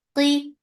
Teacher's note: qaf is heavy. For kasra give E sound. It will be comparatively light because there is kasra on it.